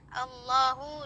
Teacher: Allahu di situ lafaz Allah dibaca tebal karena dia sebelumnya itu berharokat dhammah, jadi harus tebal tafkhim, dibaca panjang 2 harokat